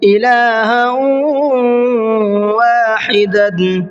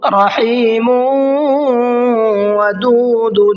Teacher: تنوین کو ادغام کر دیں گے واو کے اندر، یعنی تنوین کو واو سے ملا دیں گے، اور جو نون کی آواز ہے اس میں تھوڑا سا غنہ کر کے پڑھیں گے